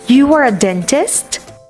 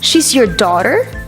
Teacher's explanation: rely on a rising intonation at the end of the sentence to signal that they are asking a question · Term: declarative question